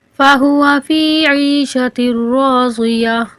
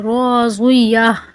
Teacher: را اور ضاد موٹے حروف ہیں، ان کو پر پڑھیں گے